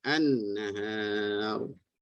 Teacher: Ya, tadi bacaan izhar kan, ya, idgham syamsi ini iaitu digabungkan. Menggabungkan suara lam ke dalam huruf selepasnya. Sebab itu dapat tanda tasydid tu, ya.